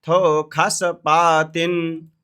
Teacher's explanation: इसमें ये जो सा है इसको ख पढ़ते हैं वेद में